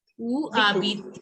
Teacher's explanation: The H is silent in French. So you don't have to pronounce H. H is not to be pronounced.